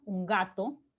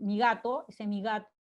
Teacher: mi gato ya no es un sonido oclusivo propiamente, sino más bien fricativo